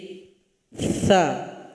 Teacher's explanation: Ada juga hamas atau angin yang mengalir, suara nafas yang mengalir.